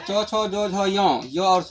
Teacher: ये सब वर्ण का उच्चारण तालू से होता है ना की मुंह से